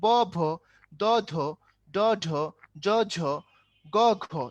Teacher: প্রথমটাতে বাতাস কম, তার মানে এটা হলো অল্প প্রাণ, আর পরেরটার মধ্যে পাইলাম অনেক বাতাস, এটা হলো মহাপ্রাণ